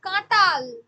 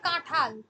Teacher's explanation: মহাপ্রাণীভবন ঠিক আছে অল্পপ্রাণ থেকে মহাপ্রাণ